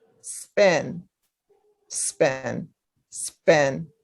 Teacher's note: it does not aspirate anymore